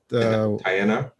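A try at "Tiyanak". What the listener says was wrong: Tianak. It's like cha instead of tia. Chanak. Yeah.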